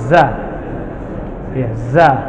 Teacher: lidahnya keluar kalau ini nempel di gigi seri Kalau yang ini ujung lidah hampir bertemu dengan gigi seri bawah itu istilahnya namanya istifal atau lidahnya turun lidahnya ngikutin Graham hurufnya